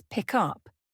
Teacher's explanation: in the phrase pick up, the K blends into the U, making it sound like pie. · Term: linking